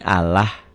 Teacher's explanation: Lafaz Allah dibaca tarkik. Ingat kik tipis berbunyi Allah.